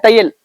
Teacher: இந்த ஐங்கிற எழுத்து வந்து ஒரு சொல்லோட முதல்ல வந்துச்சுண்டா தனக்குரிய 2 மாத்திரைகள் அளவில் இருந்து குறைந்து ஒன்றரை மாத்திரையாக ஒலிக்கும் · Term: ஐகார குறுக்கம்